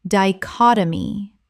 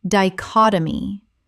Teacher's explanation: 4 syllables with the stress on the second.